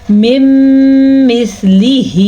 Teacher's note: میں نے ادغام بالغنہ کیا ہے